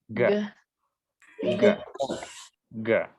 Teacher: remember that g is lingua velar and it is voiced